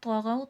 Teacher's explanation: طوا موٹا کر کے پڑھا جائے گا کیونکہ موٹے حرفوں میں سے حرف مستعالیہ میں سے